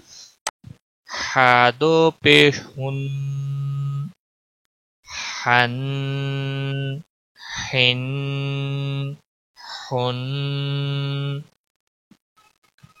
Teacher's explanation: وسط حلق والا حا ہے